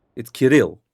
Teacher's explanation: You put the enunciation on the second syllable, not the first.